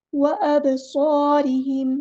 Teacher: स्वाद heavy letter है, पूरा अदा करना है